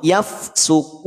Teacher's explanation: keluar dari aljauf dari rongga mulut bukan dari rongga hidung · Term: tidak sengau